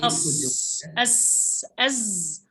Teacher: Jadi ujung lidahnya di belakang gigi seri bagian bawah, tapi posisinya berada di antara dua gigi seri atas dan bawah, hanya rada ke bawah sedikit. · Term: as-shafir